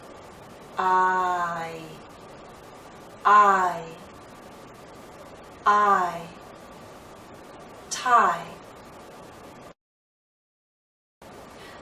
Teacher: into e with our lips fully spread but we come close start in a more open position ah and then glide into e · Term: dip thong